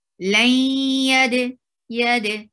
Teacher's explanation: This is idgham with gunna. You're keeping the sound in your nose.